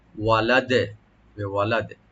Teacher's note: যদি এখানে আমরা ওয়াকফ করি দালটা সাকিন হবে এবং কলকলার সাথে আমরা সাকিন করব